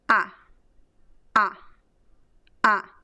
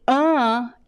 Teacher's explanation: the regular ah and the uh which is the nasal ah